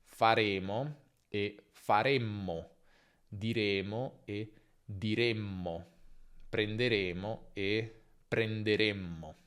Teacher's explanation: con le nasali, la geminazione, quindi la versione doppia o lunga di queste consonanti, non crea una pausa come nelle occlusive. Il suono viene semplicemente allungato, quindi confronta mama con mamma.